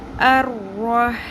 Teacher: ہا کی آپ نے اچھے سے پریکٹس کرنی ہے، وسط حلق سے آواز نکالنی ہے